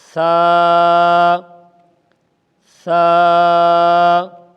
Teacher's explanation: زبان کا کنارہ اوپر والے دونوں دانتوں کے کنارے سے نرمی کے ساتھ لگے گا تو ثا کا مخرج ادا ہو جائے گا